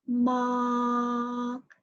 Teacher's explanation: this is the consider as the high tone and it's flat it's a high and flat tone